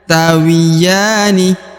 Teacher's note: huruf ya dibaca Dua harakat karena di atasnya terdapat Alif kecil